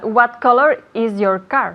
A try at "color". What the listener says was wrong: Color, no cola. Color. Color. Hay que bajar un poquito la mandíbula. Color. Color, ¿ok? Color. No se dice color ni color. Es color.